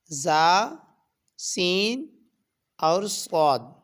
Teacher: تو یہ 3 حروف کو ادا کرتے وقت سیٹی کی طرح تیز آواز نکلتی ہے، اس لیے ان حروف کو حروف صفیریہ کہا جاتا ہے۔